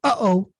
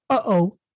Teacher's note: they call it a glottal stop in English, which is the sort of sound that you make when you stop. Like, for example, uh-oh, when you say uh-oh, for example, that's a glottal stop.